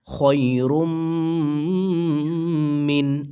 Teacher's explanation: দুই পেশ রুম তানভীনের পরে মিম ইদগামে বা গুন্না